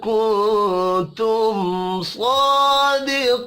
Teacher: میم ساکن کے بعد صاد ہے، اظہار شفی ہوگا، یہاں پر غنہ نہیں ہوگا